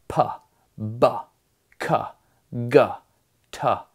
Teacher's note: The fact that you can create those backwards is very strange because if you look at a spectrogram of those sounds, you have this very sharp spike where the sound starts and then this release of air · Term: plosives